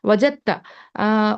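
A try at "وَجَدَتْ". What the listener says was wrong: नहीं नहीं, हाँ, ता साकिन करना है, हमेशा ये जहन में रखना है, ठीक है। वजदत, ये एक्चुअली माजी का है। वजदत उस औरत ने पाया।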